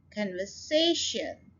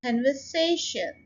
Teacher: say के ऊपर आप स्ट्रेस डाल रहे हैं